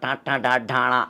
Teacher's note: నాలికను పై పైకి తన్నుతున్న ట ట డ డా డ అనే మూర్ధన్యాలు కావచ్చు